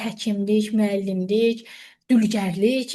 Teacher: Peşə bildirəndə əsasən vurğu sona düşür.